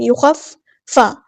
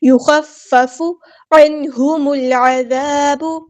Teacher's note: فا تشدید والا ایک بار ساکن کر کے ایک بار اس کی حرکت کے مطابق